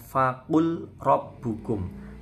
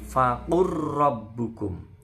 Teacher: Faqur ya, roknya bertasydid, lamnya melebur.